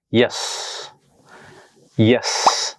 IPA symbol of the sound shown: j